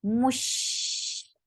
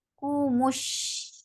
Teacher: sheen will get sifa of rakhawa and tafashi. The sound should spread.